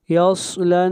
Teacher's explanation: صاد حروف مستعلیہ میں سے ہے، صاد کو موٹا پڑھا جائے گا